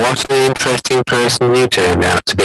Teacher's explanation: It's not going up and down. It's just gradually going down. You make it sound as if you're falling asleep. And so she's saying he's interesting, but the prosody is saying he's boring. · It's like a staircase going down. It's not high. It's not going up and down. It's just gradually going down. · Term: sounding bored